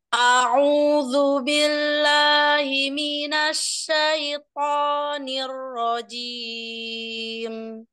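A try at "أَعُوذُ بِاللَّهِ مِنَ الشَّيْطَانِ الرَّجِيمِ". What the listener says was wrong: Umanya jangan terangkat. Jangan terlalu, jangan terangkat. Ya, al jauh, tapi dia enggak suaranya itu enggak naik ke atas, enggak gitu ya. A'u.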